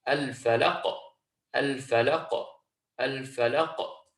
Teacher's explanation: We're not going to hold the qaf in its point of origin at the back of the tongue, but we're going to allow this natural bounce to come through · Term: qalqalah